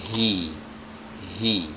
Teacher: Huruf H ini juga kemarin sudah kita bahas, dikeluarkan persis dari pita suara atau tenggorokan bagian bawah